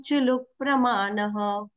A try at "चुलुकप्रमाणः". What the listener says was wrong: चुलुक, चुलुक नहीं चुलुक अगर आप बोलते हो ना तो क आधा सुनाई देता है।